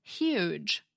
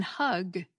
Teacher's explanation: It's true that we hear it as an H, but it's not the same kind of H that we have in hug. That H is made by just letting air flow past your vocal cords down in your neck. The H in huge, though, is made by raising the body of your tongue up close to your palate and forcing air through that constriction.